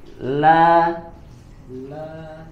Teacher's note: pada huruf lam yang berharakat fathah la la dibaca dengan tipis